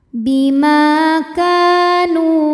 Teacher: Bima ka dihukumi dengan mad tabi'i zahiri, sebab ada alif yang sebelumnya berbaris fathah, maka huruf kaf panjang 2 harokat.